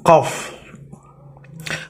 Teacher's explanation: Qaf tempat keluarnya dari pangkal lidah dan langit-langit mulut bagian belakang